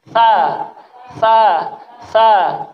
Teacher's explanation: Makhrajnya tha dari ujung lidah ketemu gigi atas